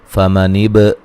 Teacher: فمنب با پہ قلقلہ کریں گے